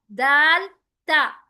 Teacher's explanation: जुबान की नोक सामने वाले दांतों के बैक से जाकर टच होती है। बस फर्क इतना है, ता और दाल बारीक है, तो हेवी है।